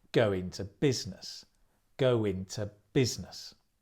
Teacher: to go into business in to becomes inter go into and the stress comes on the business